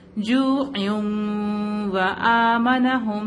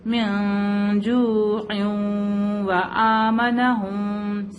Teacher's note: ہم اس نون تنوین کو ہم واو سے ملائیں گے اور غنہ کر کے پڑھیں گے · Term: ادغام مال غنہ